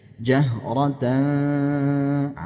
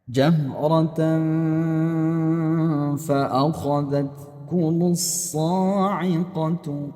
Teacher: Kalau misalnya yang disebutkan itu nanti adalah huruf fa, maka arah-arahnya sudah condong ke huruf fa walaupun samar-samar gitu ya. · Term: ikhfa hakiki